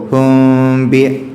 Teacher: ബാഇൻ്റെ മുമ്പ് സുക്കൂനുള്ള മീമ് വന്നു കഴിഞ്ഞാൽ അവിടെ മണിക്കണം. ഒരൽപ്പം ഇഖ്ഫാഓടുകൂടി അവ്യക്തതയോടുകൂടി മീമിനെ മണിക്കുകയാണ് വേണ്ടത്. അപ്പോൾ ഹും ബി എന്നുള്ള രൂപത്തിലേക്ക് പോവും.